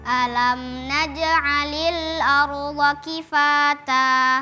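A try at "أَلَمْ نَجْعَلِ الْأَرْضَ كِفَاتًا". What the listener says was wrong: Tipiskan hamzahnya, tebalkan roknya.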